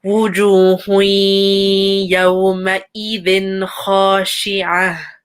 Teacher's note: there's a tanween dhamma and after there's a ya. So make sure you make that full merge.